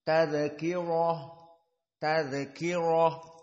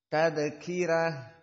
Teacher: semua jumhur hafz alqisai dan yang lainnya membaca ro tafhim